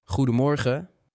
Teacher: that G is a bit breathy at the back of the throat.